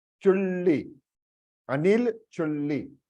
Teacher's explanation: ल बोल के ऊपर मूर्धन्य पे tongue you have to stick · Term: हाफ ल